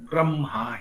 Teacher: ब्रह्मा ही बोलना है, पहले म बोलना है, पीछे ह बोलना है